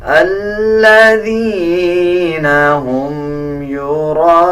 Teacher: الف کے اوپر بڑا مد ہے تو ہم اس کو 5 سیکنڈ لمبا کر کے پڑھیں گے